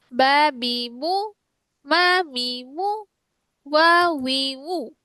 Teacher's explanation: বা হচ্ছে ঠোঁটের ভেজা জায়গা হতে, মিম হচ্ছে ঠোঁটের শুকনো জায়গা হতে, ওয়াও হচ্ছে ঠোঁটের মাঝখানে গোলাকার ফাঁকা স্থান হতে।